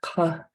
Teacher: that underlying K is in the back of your throat.